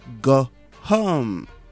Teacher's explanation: Let's drop that H so it sounds like go home.